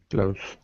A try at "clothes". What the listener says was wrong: Okay, you got to make sure it's one syllable. Proper pronunciation is the voiced TH sound, clothes. However, a piece of advice for you and everybody else, 99% of all native speakers say close, the same as close the door. Why? Because it's a lot easier.